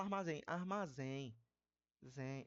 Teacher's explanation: Porque aqui no caso, esse M, por mais que seja um M aqui, foneticamente ele faz o papel de um I · esse M, por mais que seja um M aqui, foneticamente, ele faz o papel de um I. E como é mais forte que o I aqui nesse caso, armazém e armazém, então é decrescente. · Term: ditongo nasal decrescente